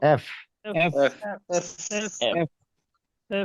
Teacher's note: উপরের দাঁতগুলো নিচের ঠোঁটে লাগছে